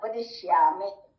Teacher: ವದಿಶ್ಯಾಮಿ ಅನ್ಬೇಕಾದ್ರೆ ದಿ ಅನ್ನೋದು ಅಲ್ಪಪ್ರಾಣ ಮಹಾಪ್ರಾಣ ಹಾಕಿದ್ರೆ ಬೇರೆನೇ ಅರ್ಥ ಆಗೋಗುತ್ತೆ ಇದು ಅಲ್ಪಪ್ರಾಣ ವದಿಶ್ಯಾಮಿ ತನ್ಮಾಮವತು ತನ್ಮಾಮವತು ತದ್ವರಮವತು